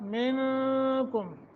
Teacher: من نون ساکن کے بعد کاف ہے، اخفا کریں گے